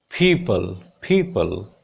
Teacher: Primary stress will be on pa sound.